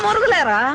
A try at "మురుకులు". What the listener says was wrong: మురుగులు కాదమ్మా, మురుకులు.